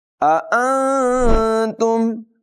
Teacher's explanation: یہاں نون ساکن میں اخفا کریں گے، ناک میں واضح لے جا کر ادائیگی کریں گے